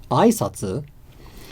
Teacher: sat the greetings as a question it would be so it it would start high go low and then there would be the question inflection at the end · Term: accent on the first mora